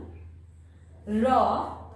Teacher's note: উচ্চারণের সময় এই জিহ্বাগ্র বা জিহ্বার অগ্রভাগ কম্পনের সৃষ্টি করে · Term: কম্পনজাত ধ্বনি